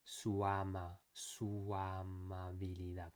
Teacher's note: a more natural thing to do would be to go from one vowel to the next smoothly. Su amabilidad, not su amabilidad.